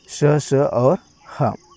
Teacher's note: उष्म जिनका उच्चारण एक प्रकार की रगड़ या घर्षण से उत्पन्न हो